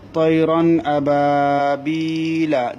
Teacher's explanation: তাইলে ইজাহার করে পড়তে হয় মানে স্পষ্ট করে পড়তে হয়, অর্থাৎ আওয়াজটাকে নাকের বাসির মধ্যে না নিয়ে ইজাহার স্পষ্ট করে পড়তে হয়। নাকের বাসির মধ্যে নেওয়াটাকে গুন্না বলে, নাকের বাসির মধ্যে না নেওয়ে নিজ নিজ মখরাজ থেকে পড়াটাকে ইজাহার বলা হয়।